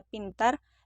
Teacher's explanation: P pada posisi awal seperti pada kata pintar diucapkan secara meletup